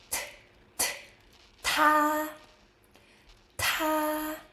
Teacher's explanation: D, da, da, da. T, same tongue position as D, but with a strong puff of air.